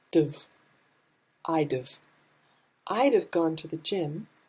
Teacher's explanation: Here, instead of would have, we just say d've.